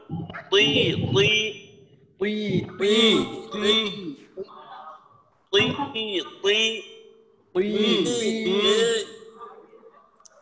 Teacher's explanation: তর মাখরাজ হলো জিহ্বার আগা সামনের উপরের দুই দাঁতের গোড়া।